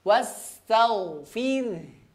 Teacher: huruf ghain dibaca tebal. Kemudian dialirkan ya, dialirkan nafasnya. Tapi tidak berlebihan ya, dia hanya mengalir sedikit saja ya, mengalir sedikit saja ya.